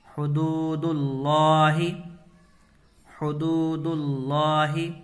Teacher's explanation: یہاں پر اللہ کے لام سے پہلے دال کے اوپر پیش ہے، تو اللہ کے لام کو پر کر کے پڑھیں گے۔